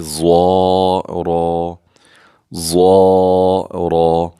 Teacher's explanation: ضا بھی مستعلی حروف میں سے ہم پر کر کے پڑھیں گے، اور را کو بھی پر کر کے پڑھیں گے